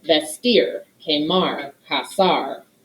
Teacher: the verbal stress the heavy syllable is that last one that ends with an r